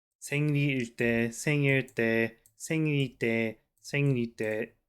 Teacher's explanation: these are so similar, 리 and il, that it kind of becomes one syllable